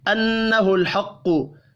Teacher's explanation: نون مشدد پر غنہ کرنا ہے, قاف حروف مستعلیہ ہے, پر پڑھا جائے گا